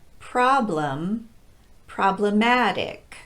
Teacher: stress changes but the pronunciation of pro does not problem atic we're no longer stressing that first syllable in problematic but it still gets the pro pronunciation · For example, the word problem is stressed on the first syllable and gets the pra pronunciation